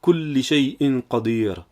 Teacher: Car l'apostrophe, je l'ai laissée pour le Hamza, qui est une sorte d'arrêt où l'on prononce distinctement l'accent qui est dessus, comme dans Kulli shay'in qadir.